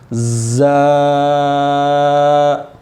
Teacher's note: زبان کی نوک دانتوں کے اندرونی کنارہ سے لگے تو زا ادا ہوتا ہے